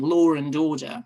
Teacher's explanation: there's a very common phenomenon in the English language, the intrusive R, as in law and order